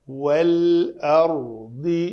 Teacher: واو کے لیے شفتن گول, دونوں ہونٹ گول · را کو پر کرنا ہے, اردی نہیں ہوگا